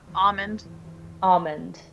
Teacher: so you don't pronounce the L